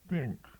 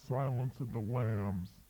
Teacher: Poles tend to use unvoiced or devoiced consonant sounds at the end of words